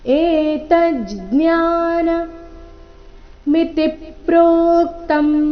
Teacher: ಏತ ಆದ ನಂತರ ಅರ್ಧ ಜ ಮುಂದೆ ಜ್ಞಾನ ಈ ರೀತಿ ಬರಬೇಕು